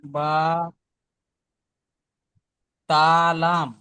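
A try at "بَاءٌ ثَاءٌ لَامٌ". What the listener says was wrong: তা নয়, মাথা মোড়া আছে, যখন মাথা মোড়া না থাকবে তখন তা হবে।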